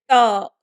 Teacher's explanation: When we say ta, the tongue is hitting on the top.